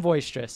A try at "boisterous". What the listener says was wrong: boisterous. It's not a V. It's a B.